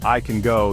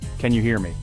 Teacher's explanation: in the first sentence can is unstressed and sounds weaker in the second sentence it's stressed and sounds stronger